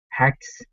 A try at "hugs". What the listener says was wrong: Let's go to hugs instead of hags.